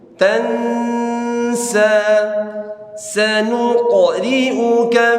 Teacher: Sanuq, sanuq ri'uka, sanuqri'uka fala ya tansa, nun ketemu sin ikhfa, tahan di situ ada dengung